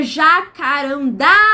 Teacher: A sílaba mais forte tá na última casa, última sílaba. Então, ela só pode ser uma oxítona.